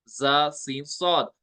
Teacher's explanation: जुबान की नोक लगती है दोनों दांतों के अंदरूनी किनारे के साथ ज्यादा हिस्सा लगता है नीचे वाले दांतो के किनारे के साथ